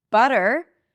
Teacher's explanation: That is a flap T because here the T is between two vowels.